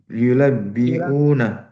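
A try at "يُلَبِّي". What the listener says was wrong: yulabbi. Dah pakai una. Yulabbi saya, yulabbi. Ya, yulabbi, yulabbi. Yu. yu bukan mu. Yulabbi.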